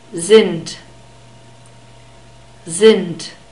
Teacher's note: Sind, are, sind, we have a soft S at the beginning of German words and a short E sound. The D is spoken like a T when we have it at the end of a word.